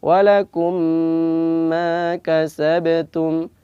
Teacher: Idgham mutamatsilain ini ada gunnahnya, ada mim tasydid, ada gunnahnya atau dengung, yaitu dua harokat.